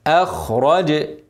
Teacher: الجيم ساكن حرف قلقله هن قلقله